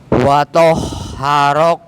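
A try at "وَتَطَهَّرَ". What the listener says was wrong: Nah, agak dimasukkan Pak. Itu malah huruf ha itu, ya. Agak dimasukkan lagi wa tahharak.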